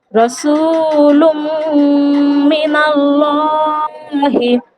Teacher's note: লামের উপর যেহেতু খাড়া জবর আছে, তাই ওখানে আলিফ মাদ্দার মতো 1 আলিফ পরিমাণ টান দিয়ে পড়তে হবে। · লাম মুসাদ্দাদের পূর্বে জবর আছে, তাই এখানে লামকে পুর করে অর্থাৎ ল পড়তে হবে। হা জের হি, হা এর নিচে জের, জেরকে তাড়াতাড়ি পড়া, মোটি না টানা, মারুফ পড়া, মাজহুল পড়া নিষেধ, হা জের হি।